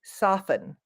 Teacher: The T is silent on soften. So it almost just sounds like there is no T